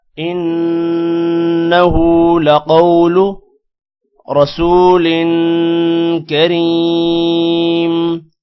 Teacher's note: انه لقول انه نون پر غنہ ہوگا جبکہ ہا پر الٹا پیش ہے لمبا کریں گے. لقول قوف موٹا ہوگا، قوف کے بعد واو ہے، تھوڑا سا لمبا کریں گے اور لو کو لمبا نہیں کرنا.